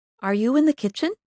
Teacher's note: make your voice go up at the end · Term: Rising intonation